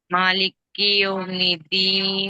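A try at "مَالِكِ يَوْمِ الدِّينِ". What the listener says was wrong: కీ కీ దగ్గర నొక్కొద్దు. మాలికియోమిద్దీన్.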